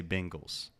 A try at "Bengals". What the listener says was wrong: Bengals. There's no Bing. It's not B-I-N-G. Bengals.